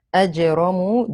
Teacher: jim is a qalqala letter, make the qalqala, it's the lightest form of it. Ra has a fatha, it is heavy.